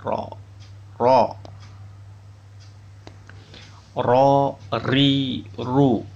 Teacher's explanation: Makhraj huruf ro, ujung lidah agak ke dalam mengenai gusi gigi seri atas.